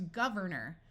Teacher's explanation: notice that the or sound at the end of a word tends to become muffled and sound like er